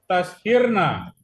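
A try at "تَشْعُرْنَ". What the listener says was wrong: oh, tashar, jangan diganti.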